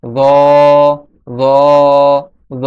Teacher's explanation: সামনের দুই দাঁত তার আগার সঙ্গে যখন জিহ্বার আগা লাগবে তখন জ উচ্চারিত হবে।